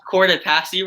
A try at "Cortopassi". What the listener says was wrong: Yeah, that's not right. It's an Italian name. There's no short A sound in Italian. It's Cortopassi.